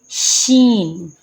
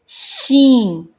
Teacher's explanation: زبان کے درمیان اور تالو کے درمیان سے شین ادا ہوتا ہے، یعنی کہ آپ کا درمیان جو زبان کے جو درمیان کا حصہ ہے اور جو آپ کے تالو کے اوپر کے درمیان کا حصہ ہے، آپ نے ان دونوں کو آپس میں ٹچ کرنا ہے تو کیا ادا ہوگا؟